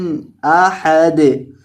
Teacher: آخر پہ بھی دال ساکن کو آپ نے ہلا کر پڑھنا ہے